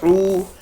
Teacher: تو یہاں پر لکھا ہے قل، یعنی قاف لام پیش قل اعوذ، اور حمزہ ہے، حمزہ کے ساتھ عین واو پیش او، عین واو پیش او جو ہے واو مدہ ہے، واو کے اوپر ساکن ہے اور واو ساکن سے پہلے پیش ہے تو واو مدہ ہوگا، یعنی ایک الف کے برابر کھینچ کر پڑھیں گے